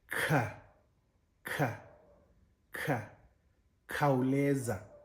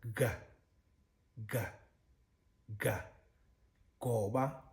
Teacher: And but when you look at them in terms of the mechanisms by which the sounds are produced, for instance, you know the ga, ka, and ga are essentially the same group of sounds. And so ka, when you voice it, adding that like basal sound, that bass sound, it becomes ga. So essentially it's the same, but having transformed by adding that slack voice sort of variation to it.